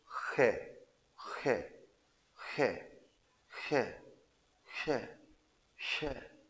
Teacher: खर्ज में थोड़ा सा खरखराहट सी आएगी इसमें, तो इसकी तरफ जैसे हम खे को बोलते हैं ना उसकी तरफ थोड़ा झुकाव है इसका, खे।